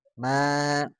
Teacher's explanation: ma nya itu adalah tipis, ya. Dan alif madiah itu yang panjang itu, ya.